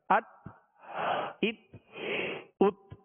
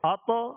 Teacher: پہلے تا میں قلقلہ نہیں ہے اور طا میں قلقلہ کرنا ہے